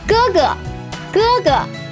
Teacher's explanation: 哥 first tone, but the second 哥 is pronounced as a neutral tone and sometimes can be omitted in spoken Chinese.